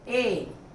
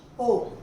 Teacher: ए में जीभ आगे है और ओ में जीभ पीछे है।